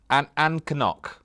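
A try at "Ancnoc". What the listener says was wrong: So, Ancannock is not quite right. It's very close. Ancannock is actually Annock, which seems weird, because why is there an extra C in there?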